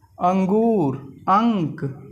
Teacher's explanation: यह स्वर के बाद आने वाला व्यंजन है जिसकी ध्वनि नाक से निकलती है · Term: अनुस्वार